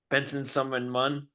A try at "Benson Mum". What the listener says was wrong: Benson Mum, wow. put 18 extra syllables in there.